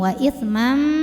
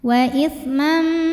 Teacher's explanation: maka bunyi tanwinnya masuk ke mim. Wa itsmam disertai bunyi dengung, jadi bunyi m tahan. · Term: idgham bi gunnah kamil